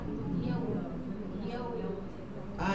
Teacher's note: Kita kena angkatkan sikit tengah lidah yaw. Ya memang dia keluar makhraj di tengah lidah. Tapi kita sebab ya ni huruf istifal, huruf nipis, so kita tak boleh nak angkat sangat.